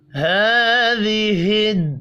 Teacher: کھڑی زبر ہے، ایک الف کے برابر کھینچ کر پڑھنا ہے